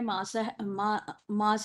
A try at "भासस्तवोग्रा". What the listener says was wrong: भासस्तवोग्रा, मास नहीं, भ है भ। भासस्त भ, भारत का भ।